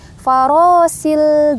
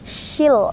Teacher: tengah-tengah lidah teman-teman ketemu dengan langit-langit atas syil gitu ya jadi bacannya tebal gitu Kemudian yang kedua su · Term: huruf Sya